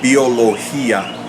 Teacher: vowels and this isn't necessarily a combination because what happens is these two strong vowels are two separate syllables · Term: hiatus